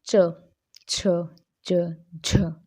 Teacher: पहले तो हल्की जीवा टच करेगी, फिर उसके बाद रगड़ सी खाकर वायु एकदम से बाहर निकल जाएगी · तीसरा स्पर्श संघर्षी, मतलब दोनों का मिला हुआ रूप। जिन व्यंजनों का उच्चारण शुरू में तो स्पर्शी सा होता है और अंत में संघर्षी सा हो जाता है